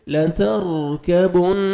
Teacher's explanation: نون مشدد ہے غنہ کریں گے نوز میں ساؤنڈ لے کے جائیں گے